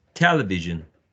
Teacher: the first syllable should be the most prominent of the four syllables